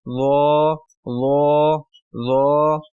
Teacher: फर्क रखना है और इसके बाद अगला हर्फ है व इसको जबान की नोक और सना उलिया के सिरे पर लगाने से अदा करेंगे